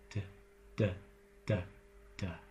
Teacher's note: Not changing manner or place, but vibrating the vocal folds, you get a D.